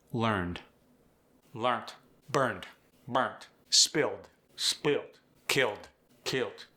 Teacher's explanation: Appalachians sneak a T in at the ending of words